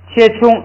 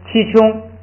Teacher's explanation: 如果按照那个乌是闭元音，前边这个要发成一，那就读成七穷，这就是把那个前边的开元音读的闭一点